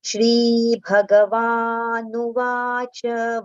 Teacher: Va we have to prolong. Na with short U vowel sound. Vanu vacha cha with the complete pronunciation.